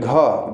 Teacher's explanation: घ बोल रहे हैं तो आपका क्या हो रहा है स्वर तंतु कंपन हो रहा है